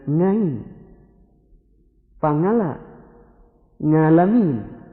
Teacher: Ada lagi satu daerah yang tidak bisa menyebut dengan ain. Mereka selalu menyebut dengan ngain, pangala, ngalamin, dan lain sebagainya.